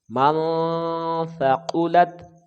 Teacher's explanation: پڑھیں گے جی، من ثقلت، سا قاف کو جلدی پڑھیں گے، لام کو تا کے ساتھ ملائیں گے، یہ غیر قلقلہ ہے، بغیر جنبش کے ساتھ پڑھیں گے